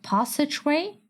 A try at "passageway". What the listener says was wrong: Passageway? It's a passageway. Passageway. British. Not every A needs to be the British A. You're not even British.